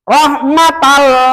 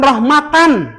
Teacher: Jadi jikalau ada tanwin patah, tanwin domah, tanwin kasrun mati ketemu dengan lam, ketemu dengan ro, maka n-nya dihilangkan.